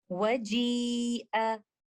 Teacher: this mud is caused by letter Hamza that comes after the mud letter in the same word. Because Hamza and the mud letter is in the same word, that's why this mud is called Muttasil or the connected or attached one. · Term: Maddul Muttassil